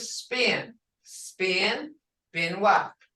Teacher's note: unaspirated, said without the puff of air that English speakers add at the beginning of a stressed syllable